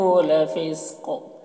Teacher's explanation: یہاں پر وقف کی صورت میں قاف میں قلقلہ کریں گے اور قاف کو پر پڑھیں گے